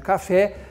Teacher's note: A última sílaba é a forte. No caso de café, e aí você se lembra que o nome dessa palavra é oxítona.